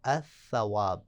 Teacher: الثواب، ثواب علیحدہ تھا، لام اس کے سر پہ آ گیا تو الثواب، لام اس میں ادغام ہو جائے گا